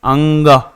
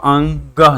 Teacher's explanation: व्यंजन है वर्ग का पांचवा अक्षर जो है अनुनासिक होता है अनुनासिक में होता क्या है जिसको बोलने में नाक और मुंह दोनों से हवा निकलता है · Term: अनुनासिक व्यंजन